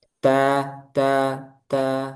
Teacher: hamasnya itu bukan hanya ketika sukun ya. Tapi ketika berharokat juga ada.